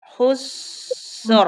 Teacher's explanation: sinnya tipisin dulu sambil ngalir tipis baru rnya tebal